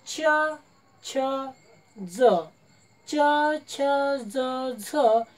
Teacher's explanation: आपल्या जिभेचा शेंडा मागे वाकते जिभेचा शेंडा मागे वाकवला जाते आणि जिभेच्या मागील कडा मागील बाजूच्या कडा मुखातील वरील भागाला स्पर्श करतात आणि मुखातील वरील भागाला ज्या ठिकाणी स्पर्श करतात ते या ठिकाणी